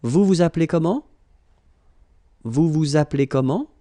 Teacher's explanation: raise a little bit your voice at the end